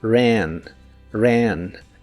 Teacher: la A de esta palabra la pronuncias como una combinación del sonido E y el sonido A. Ran, ran. Si se te dificulta pronunciarla al principio, puedes decir los sonidos E, A separados y luego juntarlos.